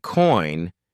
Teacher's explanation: when you say coin your mouth Glides from the o sound to the I sound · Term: dip thongs